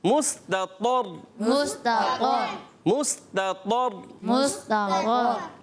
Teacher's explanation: پہلے زبر آ رہا ہے، پر ہو جائے گا، مستطر، مستطر، را کو پر کریں گے اور طا کو پر کریں گے